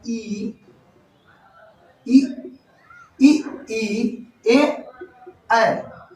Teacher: इनका उच्चारण आप करके देखिए, उच्चारण जब आप करेंगे तो आपको खुद पता चल जाएगा कि ई, ए का उच्चारण करने में जीभ का आगे वाला हिस्सा काम कर रहा है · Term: अग्र स्वर